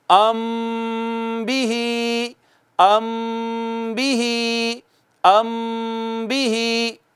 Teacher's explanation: میم ساکن کے بعد جب با آئے گی تو ایک الف کے برابر آواز کو چھپا کر رکھیں گے اور یوں پڑھیں گے ام بھی، ام بھی، ام بھی۔ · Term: اخفا